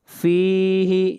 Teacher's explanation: فا کو کھینچ کر پڑھیں گے ایک الف کے برابر، یہاں پر مد اصلی ہے۔